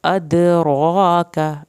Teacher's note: ادراک، دال کا ہم نے کلکلا کیا، را کو پر بھی کرنا ہے اور کھڑی زبر کو بھی لمبا کرنا ہے، کاف کی زبر کو نہیں کھینچنا۔